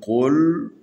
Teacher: یہ قاف ہے، حروف استعلاء میں سے ہے، اس کو موٹا پڑھنے۔